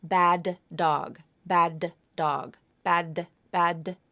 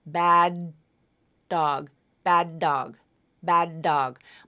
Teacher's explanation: my tongue tip only comes up once for the that link there's not a double it's just once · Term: unreleased